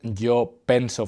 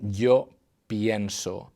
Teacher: So if this was strictly regular, we would say yo penso for the first person, but instead of that, the E is becoming IE, and we are saying yo pienso.